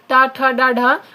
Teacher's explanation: जब टा वर्ग आता है तो ये मूर्धन्य होता है